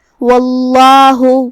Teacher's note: یہاں لفظ الجلالہ ہے کلمت اللہ. یہاں لفظ الجلالہ کا حکم ہے تفخیم کیونکہ اس سے پہلے والے حرف پہ مطلب واو پہ زبر ہے تو ہم یہ حکم کو ایسے ادا کریں گے واللہ.